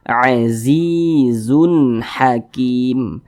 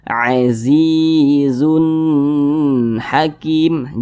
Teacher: halqi maka tanwin berjumpa dengan huruf ha hukumnya adalah izhar halqi karena dia izhar maka dibaca jelas tidak berdengung jadi dibaca pendek saja